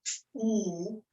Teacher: When you say something like ooh, it's a large part of your tongue is kind of in the back and up to the top